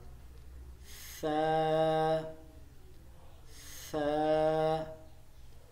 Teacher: زبان کی نوک اور سامنے والے دانتوں کے اندر والے کنارے